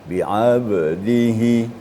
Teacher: Jadi pantulannya lebih jelas ya. Bi'abdihi, ya, harus lepas. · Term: qalqalah